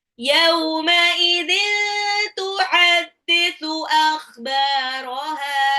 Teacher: Akhbaraha kha-nya ngorok. Dia tenggorokan bagian atas.